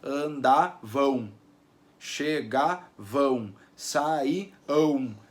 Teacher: Aquele M é um U, não é saíam, né? Não tem um som de M, tem um som de U aparecendo ali. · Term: semivogal U